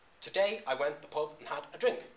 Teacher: every other syllable is stressed · Every other syllable in that line is stressed or emphasized. So you have an unstressed syllable, as in the word today, followed by a stressed syllable, as in the day part in today. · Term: iambic pentameter